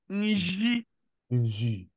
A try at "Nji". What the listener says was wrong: Ne dis pas Nji. Ce n'est pas Dieu, mais J. J.